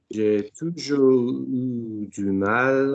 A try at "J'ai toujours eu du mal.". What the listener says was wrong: Why are you disappearing on the U? J'ai toujours eu du mal. Du mal. What is it before the mal?